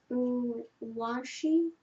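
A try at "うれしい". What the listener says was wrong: that's not wa, that's R-E. Ureshi, It's difficult for a lot of people in the very beginning to see the difference between the I and the ri.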